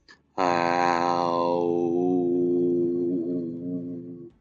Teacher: With my hand to my throat, I can feel if there's a vibration when I say ow. Since there is a vibration, the sound is voiced. The owl sound is a continuant because I can hold the sound without stopping.